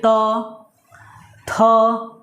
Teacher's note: जैसे बोल कर देखिए त, थ, है ना, दांत का वहाँ टच हो रहा है कि नहीं? जीभ हमारी जो है दांत पे जाके टच हो रही है। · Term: दंत व्यंजन